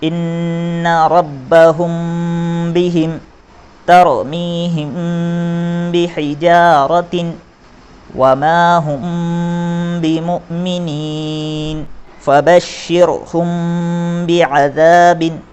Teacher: جس طرح سے اظہار شفوی میں میم ساکن کے بعد با اور میم کے علاوہ کوئی اور حرف آتا ہے تو بغیر غنہ کے ملا کر پڑھتے ہیں، اسی طرح سے اخفاء شفوی کے اندر میم ساکن کے بعد جب با آتا ہے تو اسے غنہ کے ساتھ ملا کر پڑھا جاتا ہے